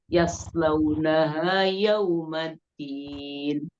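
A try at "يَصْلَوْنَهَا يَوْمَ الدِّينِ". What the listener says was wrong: Suaranya agak ke atas, jadi semua tebel. Biasa aja coba.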